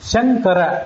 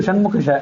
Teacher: ಶಂಕರ ಷಣ್ಮುಖ ನಾನು ಉಚ್ಚಾರಣೆ ಮಾಡೋದನ್ನ ಗಮನಿಸರಿ ಶಂಕರ ಇದು ಷಣ್ಮುಖ ಶಂಕರ ಶಿ ತಾಲುವಿನಿಂದ ಹುಟ್ಟಿದ ಶಕಾರ ಷಣ್ಮುಖ ಇದು ಮೂರ್ಧದಿಂದ ಹುಟ್ಟಿದ್ದು